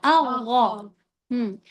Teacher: یہ جو گونج منہ کے اندر بنی ہے، ہونٹوں سے نہیں